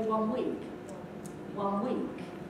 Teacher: wouldn't i'd probably say one week one week and the one the n at the end has become an m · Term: assimilation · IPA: [-m]